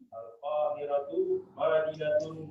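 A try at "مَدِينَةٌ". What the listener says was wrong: Madinatun. Ma tidak panjang. Madinatun.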